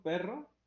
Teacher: El signo perro, el signo lingüístico perro, tiene una imagen acústica de la palabra, ¿no? Una plosiva bilabial, una vocal media eh, frontal, un flap ahí